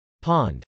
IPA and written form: pˈɑnd (pond)